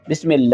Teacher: اللہ کی لام کو باریک پڑھنا ہے، کیونکہ اللہ کی لام سے پہلے اگر زیر ہو تو اللہ کی لام کو باریک پڑھیں گے